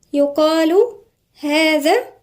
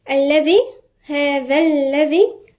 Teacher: الذال هنا من الحروف اللثوية